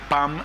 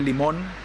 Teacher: la conversión de la n en m al final de la sílaba